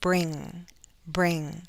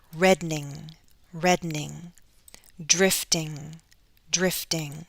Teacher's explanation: careful when you see it with ng remember there's that sound it's a nasal sound in the back of our throat towards the back of our mouth our tongue goes up and you don't want to say bring and add a syllable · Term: ng sound